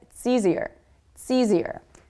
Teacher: Do you notice how it's and easier go together? It's easier. It's easier. I barely even hear the word it.